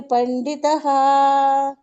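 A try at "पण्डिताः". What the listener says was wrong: ಪಂಡಿತಹ ಸರಿ ಇದ ಧನ್ಯವಾದಗಳು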